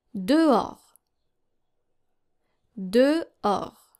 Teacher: So the H is silent and the S is silent.